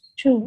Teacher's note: So the combination of the palatal and labial sound is chu.